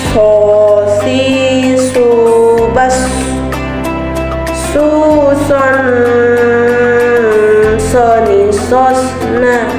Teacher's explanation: Berikutnya huruf shod. Sama seperti melafalkan huruf shin, yang membedakannya suara menebal